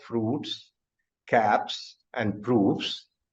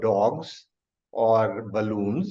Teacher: Sometimes it is sa, as in case of fruits, caps, and proofs. Sometimes it is za, as in case of dogs or balloons.